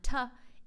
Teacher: A B sound comes from your lips closing together like a b, or the T sound, t, is the tongue in the space just behind the teeth called the alveolar ridge, causing a closure